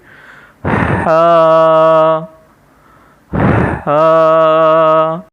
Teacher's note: اس کے اندر سانس ہوگا اور یہ حلق سے ادا کریں گے۔ ہا، پہلے ہم تھوڑا سانس لیں گے، اس کے بعد اس کی ادائیگی ہوگی۔